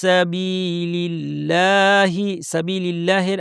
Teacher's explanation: আল্লাহের লামটা পাতলা হবে কারণ আগে জের